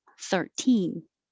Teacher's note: the stress is on the second syllable, and you keep the T sound.